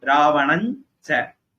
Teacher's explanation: That anuswara im, because it is followed by cha, it will change to the group of the cha, nasal sound of the cha. Cha's nasal sound is nya.